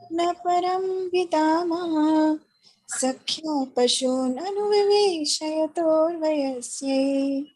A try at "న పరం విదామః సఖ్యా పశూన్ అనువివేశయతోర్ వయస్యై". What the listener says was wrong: Second line, Mataji. Second line, you are being very fast.